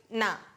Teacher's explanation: நா அப்படின்னு சொல்லும்போது அது நுனி நாக்கில் பல்லுக்கு முன்னாடி